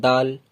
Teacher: জিভের আগাটা ওপরে দু দাঁতের গোড়ায় টাচ করি